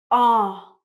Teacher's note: Now, as you can see, when I say ah, my mouth is round, my tongue and my chin are very low, and it's a long sound, it's very deep. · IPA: /ɑ:/